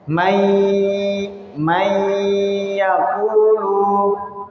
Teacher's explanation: karena idghamnya adalah idgham bi gunnah, jadi kita masih menyertakan dengungnya sehingga bacanya may yaqulu, itu ya, may yaqulu.